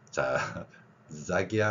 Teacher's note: 스도 아니고 즈도 아닌데 목젖이 울리는 즈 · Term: 유성음